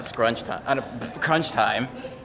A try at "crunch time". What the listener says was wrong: Crunch. Crunch. Captain Crunch, not Captain Scrunch.